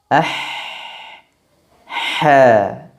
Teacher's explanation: Karena pada pengucapan huruf H, udara, angin, atau nafasnya mengalir. Tidak tertahan, tidak berhenti. · Huruf H keluar dari wasatul halqi atau bagian tengah tenggorokan, yakni tepatnya di bagian lisanul mizmar atau katup tenggorokan atau di bagian jakun kita. · dari pergerakan katup tenggorokan yang bergerak mendekat ke arah dinding belakang tenggorokan, maka keluarlah huruf H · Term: hams, huruf ha